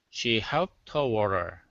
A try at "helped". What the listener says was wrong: Okay, give me that L instead of hept, helped. She helped her water.